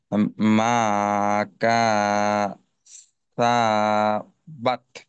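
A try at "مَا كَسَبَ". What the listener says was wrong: আচ্ছা, এতটা লম্বা করার প্রয়োজন নেই, ভেঙে ভেঙে আগে উচ্চারণ করে নিতে হবে, তারপর আনহু মালুহু ওয়ামা, কাফ জবর কা, সিন জবর সা, বা জবর বা। প্রত্যেকটা হরকতের উচ্চারণ তাড়াতাড়ি। কা, সা, বা, কাসা বা।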